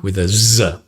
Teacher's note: buzzing with a z a voiced z